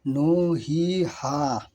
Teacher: এগুলিকে মাদে আসলি বলা হয় এবং এক আলিফ টেনে পড়তে হয়।